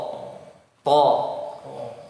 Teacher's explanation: suaranya ditabrakan ke langit-langit atas, ya, dicelah di antara tengah lidah dengan langit-langit atas. Tengah lidah naik sedikit, ada celah di antaranya dengan langit-langit atas. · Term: huruf to